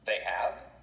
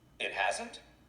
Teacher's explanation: listen and notice how the rising intonation helps to express surprise